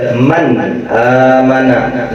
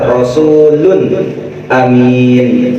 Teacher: Nunnya gak boleh ada dengung sedikit pun. Nunnya harus dibaca benar-benar jelas. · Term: izhar halki